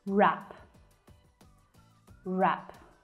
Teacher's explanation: both sides of my tongue are softly pushing against my upper teeth